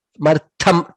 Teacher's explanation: Martham, tha again is mahaprana there.